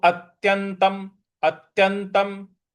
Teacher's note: त के ऊपर जो अनुस्वार है उसका म में उच्चारण हमको करना है